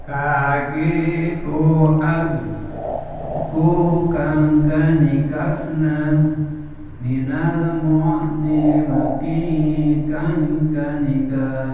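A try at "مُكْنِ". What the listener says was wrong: Nah, bukan mu tapi mukni. Nah, mukni. Seperti huruf kaf. Seperti huruf K, tapi K-nya itu dihembuskan. K gitu. Mukni. Mukni.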